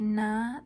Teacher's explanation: when we make some nasally sounds like na, the velum is open and allows the air to come out through the nose